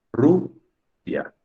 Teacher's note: La sílaba tónica es Ru.